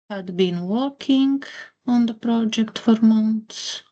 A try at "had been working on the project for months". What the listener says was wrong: Just be careful with the pronunciation there. It should be working, not walking. Working.